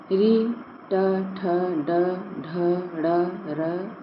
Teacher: इन वर्णों का उच्चारण स्थान मूर्धा होगा।